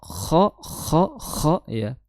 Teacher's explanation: kha itu makhrajnya di tenggorokan bagian atas, kha disertai sedikit suara ngorok, kha ya. Nah, perbedaannya kalau ha itu bersih, ha ya makhrajnya di tengah lidah, kalau kha itu di tenggorokan paling ya, tengah tenggorokan, maaf ya, untuk ha jadi bersih, tidak ada suara ya.